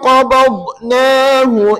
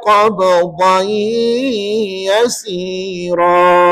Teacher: Mula-mula qabnahu tak melantun sebab dia huruf dad. Tapi second tu qab yang tu melantun sebab melibatkan huruf ba.